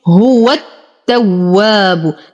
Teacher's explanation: ننتقل من فتحة الواو إلى تشديد التاء. التواب، ألف ساكنة ما قبلها مفتوح فهو الطبيعي حركتين، وتم ضمة الباء، وننتقل منها إلى تشديد الراء.